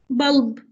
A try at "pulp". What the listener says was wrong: Yeah, pulp. Okay, with the P sound here. Pulp.